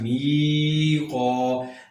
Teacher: اس کے فوراً بعد الف ہے، قاف پر چونکہ زبر ہے اور اس کے بعد فوراً الف ہے، یہاں پر یہ الف مدہ بن گیا، لہٰذا ہم اس کو لمبا کرنا ہے۔